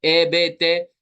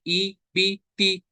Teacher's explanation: ए बे ते वाला साउंड, ये मजहूल साउंड है। हमें मारूफ साउंड पढ़ना है,